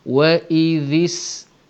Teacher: Wa idhis, zal dapat nipisnya, sin dapat terangnya